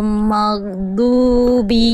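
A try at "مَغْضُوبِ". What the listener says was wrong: Oke, tinggal diringankan lagi huruf ghain, dilemesin Bunda. Dilemesin, dialirkan suara, dilemesin. Maghdubi. Yang penting ngalir suara aja.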